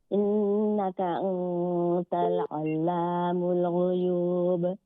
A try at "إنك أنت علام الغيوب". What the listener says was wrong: আনতা, এখানে ইন্নাকা আনতা, আনতাল নয়।